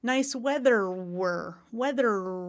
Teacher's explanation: the inside of my tongue is curled up and I'm doing that r that American R